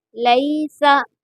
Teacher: یہاں پر مجہول نہیں پڑھیں گے، اس کو لئی پڑھیں گے، لے نہیں پڑھیں گے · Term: یا لین